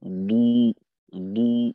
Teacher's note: দদকে মোটা গোল করে ঠোঁট যেন মাখরাজ ঠিক থাকে দদের, দালের মতো দু হয়ে না যায়।